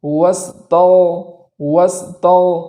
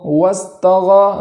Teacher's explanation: اس غین کو بھی متحرک ہونے سے بچانا ہے اور اس میں پور آواز جاری کرنا ہے